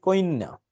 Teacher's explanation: জফলাযুক্ত শব্দে অতিরিক্ত ই আসলে তাকে বলে অপিনিহিতি